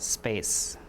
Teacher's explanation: if it's after the s the air is already out there's no air for you to aspirate it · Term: unaspirated